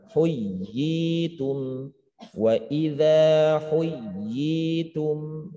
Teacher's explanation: Ya tamkinnya i-nya itu panjang bacaan dua harokatnya, yaitulah tamkinnya. Sedangkan ya bertasydidnya tidak disebut tamkin, hanya pendaskan itu ada tasydid ya, ya ada ya lagi ya.